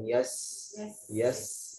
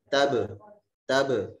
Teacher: huruf sin sifatnya rohwa. Karena sifatnya rohwa dia lebih panjang. Yes. Yes. Tapi kalau huruf ba dia sifatnya syiddah.